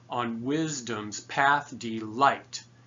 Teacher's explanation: unstressed stressed unstressed stressed unstressed stressed is the pattern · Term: iambic